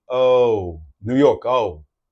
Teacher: the O New York O is a little bit open at the beginning